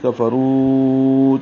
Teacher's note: کفروا، کاف فا کو جلدی پڑھیں گے، را موٹا پڑھیں گے، رو واو مدہ ہے، اس کے بعد دوسرے کلمے میں حمزہ ہے تو مد منفصل ہوگی. کفروا 4 حرکات لمبا کریں گے. او واولین ہے، 1.5 حرکت لمبا ہوگا.